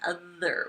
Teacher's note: Ooh, it's a buzzer. It's a voiced buzzer.